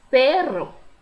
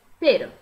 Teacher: O RR em espanhol, ele demonstra uma vibração maior da língua.